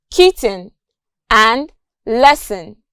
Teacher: the consonant sounds t and s plus the syllabic n in words like kitten and lesson